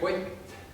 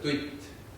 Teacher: kui nüüd meie ütleme kott, siis see peenendus või palatalisatsioon näitabki seda, et kunagi on seal i olnud, see on kadunud, aga see peenendus on jäänud.